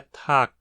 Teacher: o G final é desvozeado, tornando a pronúncia Tag.